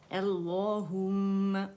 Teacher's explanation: تو دونوں لام جو ہیں وہ موٹے ہو جائیں گے، مخفم ہو جائیں گے